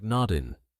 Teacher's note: The G in nodding drops, so it sounds like noddin'.